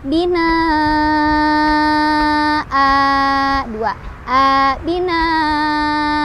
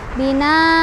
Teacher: Tetapi ketika berhenti, si hamzahnya ini berubah menjadi si fathah tanwin di atas hamzah berubah menjadi fathah saja dan dipanjangkan 2 harokat. Binaa 2, binaa Contoh yang salah, bina, nggak dibaca A-nya, harusnya dibaca untuk khusus fathah tanwin.